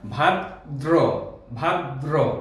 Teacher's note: উচ্চারণটি হবে এরকম, ভাদ্র হবে না, ভাদ্র, ভাদ্র। শেষে রফলা থাকলে তার আগে আর একটু দ্বিত্ব হয়, দয়ের যে কোনো বর্ণের দ্বিত্ব হয়, মানে 2বার উচ্চারণটি হয়, সেজন্য উচ্চারণে এরকম আসবে ভাদ্র।